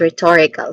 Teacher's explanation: Stress syllable is on the second syllable, tor. Again, this is rhetorical.